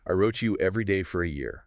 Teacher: Definitely a strong, confident fall to show it's an undeniable truth. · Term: falling tone, downward pitch